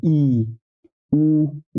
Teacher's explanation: ई के उच्चारण करने में मुख क्या होगा सबसे कम खुलता है ई उ उ बोलेंगे तब भी बिल्कुल ही कम खुलेगा ठीक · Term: समृद्ध स्वर